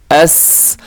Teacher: حمزہ زبر سین ایس, لیکن قلقلہ ہونے سے بھی بچائیے گا, یعنی اس کو ہلانا بھی نہیں ہے, سیٹی بھی باریک ہو اور حرف بھی باریک ہے